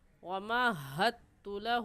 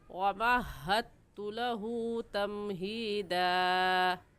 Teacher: تو جزم والا حرف دال ہے، اس کو ہم چھوڑ دیں گے، تشدید والا حرف پڑھیں گے تو اس ہا کو اس تا کے ساتھ ملائیں گے اور دال چھوڑ دیں گے، اور ایسے کہیں گے وَمَہَّدتُ لَهُ، حد تو غلط ہے اور صحیح ہے وَمَهَّدتُ لَهُ تَمْهِيدًا۔